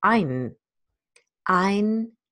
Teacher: the second N becomes a so-called syllabic consonant. It becomes, the N itself fills up a whole syllable.